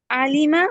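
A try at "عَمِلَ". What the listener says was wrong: No no no, no, मीम पहले है dear, मीम पहले है।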